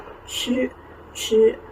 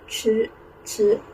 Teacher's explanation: the special consonant that is a retroflex sound ch with your tongue curled back